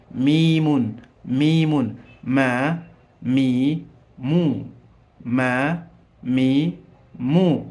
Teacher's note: Midomo ilikuwa imejibana, lakini utamkaji unaachia mdomo.